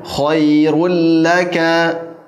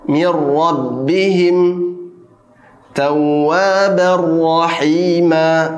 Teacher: Jadi sempurna dilebur ke huruf berikutnya, tidak ada lagi dengung sama sekali, tidak ada lagi bunyi huruf nun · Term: idgham bila gunnah